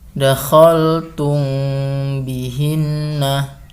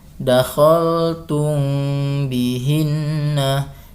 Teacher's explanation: Jadi sama seperti membacanya seperti yang kemarin, iklab yang satu versi, yaitu mimnya itu didengungkan dan jangan dirapatkan bibirnya agar dengung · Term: Ikhfa syafawi